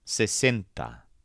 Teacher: All the vowels are short and crisp, and the stressed syllable sounds like cent.